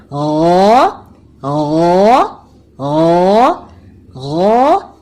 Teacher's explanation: اپنے حلق کے اوپر والے حصے سے ہم غین کی آواز نکالیں گے، زبان کی جڑ کو اوپر کریں گے تاکہ ہمارے حرف کی آواز موٹی ہو جائے